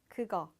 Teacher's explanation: it's not really a K sound. It's not as strong as a K, but it's also not as G as a G. It's kind of in the middle there. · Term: soft K